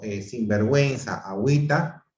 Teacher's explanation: hay diptongo, pues la U se pronuncia por medio de la diéresis.